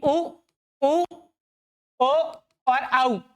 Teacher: आपके होठ जो है वह गोलाकार स्थिति में आ जाते हैं। वत्त की स्थिति में आ जाते हैं। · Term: वर्तुलाकार स्वर